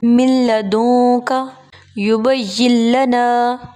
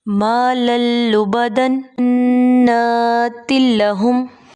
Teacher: یعنی ملا کر پڑھنا ہے غنہ کے بغیر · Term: ادغام